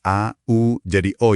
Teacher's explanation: kalau bunyi A dan U diucapin cepet, berurutan, posisi rongga mulut kita tuh otomatis ngelebur suaranya jadi O